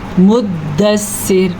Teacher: وقف کی حالت میں را باریک پڑی جائے گی